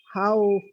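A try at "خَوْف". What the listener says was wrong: Pakai 4 harokat aja ya. Khauf.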